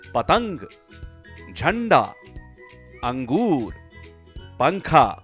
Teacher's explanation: अनुस्वार की ध्वनि नाक से निकलती है। इसका उच्चारण है अन।